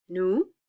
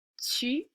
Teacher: Notice these oo sounds are more open than the tight U sound.